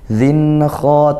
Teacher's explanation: Yawma idzin kha, yaw ini lin dibaca lembut ya, tidak dihentak sekali yaw, tapi yawma idzin, zin kha, tanwin bertemu kha diizharkan, dibaca jelas karena dia izhar halqi hukumnya, bertemu huruf kha yang merupakan huruf halqiyah.